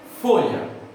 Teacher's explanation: O mais forte é o fo. É uma paroxítona. Não tem acento, mas é assim que a gente classifica.